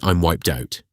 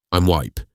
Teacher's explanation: Drop the D sound at the end of wiped if the next word starts with a consonant.